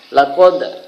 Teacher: yang sukun atau mati itu dibaca Qalqalah memantul